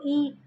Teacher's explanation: आगे की तरफ जो हम बोले और हमारी जीभ से आगे की तरफ बोले, जैसे ई बोल के देखो, ई तो आगे से आवाज़ निकल रही है, जीभ के आगे वाले हिस्से से ई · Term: अग्र स्वर